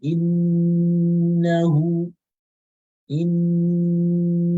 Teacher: the noon is having a shadda, and for that reason, it's pronounced with more Ghunnah than any other thing else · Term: complete form of Ghunnah